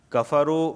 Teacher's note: کفرو واو ساکن سے پہلے پیش آیا ہے، اس وجہ سے کفرو کو کھینچ رہا ہوں میں